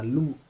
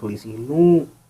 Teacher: नून गुन्ना लगाने से लू आवाज़ में थोड़ा सा नाक से आवाज़ निकलेगी थोड़ी सी लू।